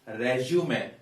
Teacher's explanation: bio data that is called resume regimen the stress is here this being a noun word a content word we stress the first syllable